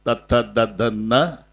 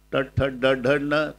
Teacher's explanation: न नळ्याचा म्हणताना दंते आहे, बाणाचा न टालव्य आहे